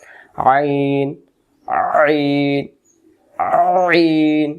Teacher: আইন অক্ষর হলকের মধ্য থেকে একটু চেপে পড়তে হয়